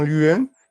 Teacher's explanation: il y a comme une espèce de Y entre crochets, c'est le son que l'on peut entendre dans huile